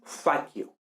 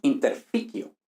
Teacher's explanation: al pasar de sílaba inicial a sílaba interior de palabra cambia el timbre de la vocal, lo que se conoce como apofonía